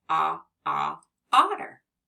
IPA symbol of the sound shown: ŏ